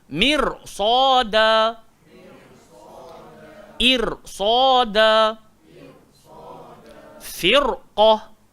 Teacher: Ra ni terkesan dengan ketebalan huruf selepas dia. Walaupun kita sebut tadi, kalau ra ni bertanda sukun, sebelum dia berbaris bawah, kita kena baca nipih. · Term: baca tebal